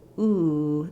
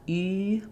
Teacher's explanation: I do have that lip rounding, but my tongue is further back